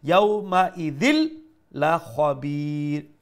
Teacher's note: make sure the kha is of the full mouth letter pronounced with the fuller sound